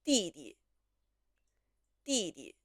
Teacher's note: The first one has the first tone, the second one has the light tone. 第 一 个 弟 是 四 声， 第 二 个 弟 是 轻 声。